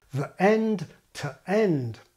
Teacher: However, as I pointed out in my long video on vowel categories, English hates hiatus, that is, vowels coming into direct contact, and especially adjacent vowels blurring into each other. And so we generally get hard attack to keep the vowels apart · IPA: ðəʔend, təʔend